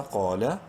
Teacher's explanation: کریں گے، بالجنو، دال زیر دی، بالجنودی، قاف الف زبر قا، منہ بھر کے پڑھتے ہوئے ایک الف کے برابر لمبا کریں گے، قاف کو الف مدہ کی وجہ سے ، لام زبر لا، قال، حمزہ نون زیر ان، نون مشدد